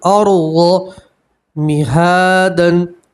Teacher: را ساکن سے پہلے زبر ہے، را کو آپ موٹا پڑھیں گے، پور پڑھیں گے، ارض مہادن، ضاد کو بھی موٹا پڑھتے ہیں، پور پڑھتے ہیں، ٹھیک ہے۔ ارض مہادن، کھڑا زبر میں بھی آپ ایک الف کے برابر کھینچ کر پڑھیں گے، ٹھیک ہے۔